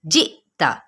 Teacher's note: جئتا، یہاں پہ دیکھیں جیم کے نیچے زیر ہے نا، لیکن آگے میں نے آپ کو بتایا تھا کل ہی کہ حمزہ اور ساکن کی دو علامات جہاں پہ بھی آ جائے نا اکٹھی، تو ہم نے کیا کرنا ہے، یہاں پہ جھٹکا دینا ہے، حمزہ ساکنہ پہ جھٹکا دینا